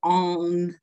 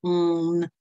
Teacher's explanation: C'est-à-dire que dans le provençal, et on le retrouvera dans l'accent méridional, dans le provençal, la voyelle nasale se dit on, avec un n qui s'entend on, le n s'entend quand même